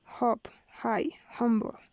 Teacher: Voiceless glottal fricative.